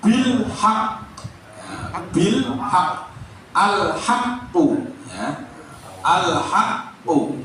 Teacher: adalah jika alif lam syamsiah dia dibaca idgham atau lebur ya kalau alif lam qamariah dia dibaca izhar